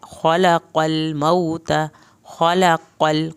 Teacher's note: क़ाफ को पुर करना है, लाम नहीं हिलाना